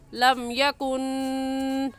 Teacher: यकुन की नून साकिन पर गुन्ना करेंगे क्योंकि नून साकिन के बाद हरूफ हल्की जो कि 6 है, हमज़ा हा आइन हा गैन खा, उनमें से कोई लफ्ज़ भी नहीं है।